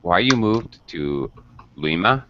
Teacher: falling intonation at the end because it's an information question